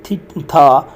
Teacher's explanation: वो कहता है मिसाल के तौर पर for example to produce the dental and था the tongue tip is pushed between the upper and lower front teeth